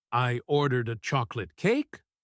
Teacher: She stretches out the word a and speaks very slowly. "I ordered a chocolate cake?" with her voice rising at the end.